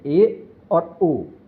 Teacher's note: ऐसे स्वर जिनके उच्चारण में मुख द्वार आधा बंद रहता है। संवर्त स्वर कहलाते हैं।